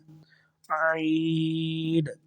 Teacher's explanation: عین کو حلق کے درمیان والے حصے سے ادا کریں گے